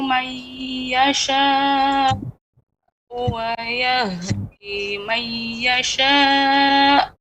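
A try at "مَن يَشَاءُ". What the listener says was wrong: mai ditekan lebih lama lagi. Mai yasha. Adanya nabar. Mai yasha.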